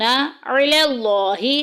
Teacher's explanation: لفظ اللہ کا لام موٹا پڑا جائے گا کیونکہ پیچھے زبر آ گئی